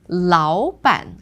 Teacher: in 老板, because it's 2 third tones, it becomes the second.